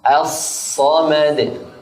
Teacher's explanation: لام التعريف الشمسية مدغمة أيضا